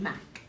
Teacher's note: K is sometimes ejective in words, as the end of words, like in Mac